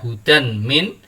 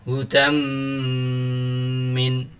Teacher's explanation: suara tanwinnya lebur ke huruf mim kemudian diikuti dengan suara mendengung Hai tidak dibaca hujan mint tetapi dibaca Huda mrminta selanjutnya ada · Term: idgham bi gunnah